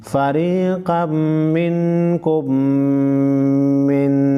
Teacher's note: मीम नून ज़ेर मिन, फ़रीक़म मिनकुम मिन। नून साकिन और मीम मुशद्दद को गुन्ना करेंगे।